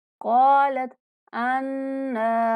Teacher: अन्ना गुन्ना करते हुए 1 सेकंड तक लंबा करेंगे